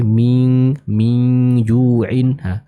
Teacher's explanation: Ikhfa menghadapi huruf jim. Nah, huruf jim dia terbaca dengan tipis, maka dengungnya pun atau ikhfanya pun akan terbaca juga dengan tipis.